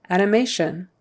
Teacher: the stress is on the third syllable animation and again the Tio is pronounced with an sh and